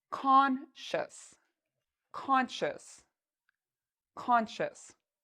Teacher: like shus so the c i o u s u s has a sh sound like you're telling someone to be quiet and then we have a short u sound and an S at the end